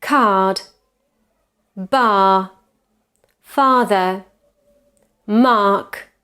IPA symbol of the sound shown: ɑː